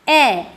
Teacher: এরপর আসবো নিম্ন মধ্য স্বরধ্বনি। যে স্বরধ্বনিগুলি উচ্চারণের সময় আমাদের জীভা মুখবিবরের সবচেয়ে নিচে অবস্থান থেকে সামান্য একটু উঠে আসে। অর্থাৎ যে স্বরধ্বনিগুলো উচ্চারণ করতে যাওয়ার সময় আমরা দেখছি যে আমাদের মুখবিবরের মধ্যে জীভা সবচেয়ে নিচের অংশে না থেকে তার থেকে একটু উপরে থাকছে তাদেরকে বলা হচ্ছে নিম্ন মধ্য স্বরধ্বনি।